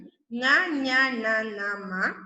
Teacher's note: മൂക്കിലൂടെ വരുന്നു അതായത് അത് അനുനാസികം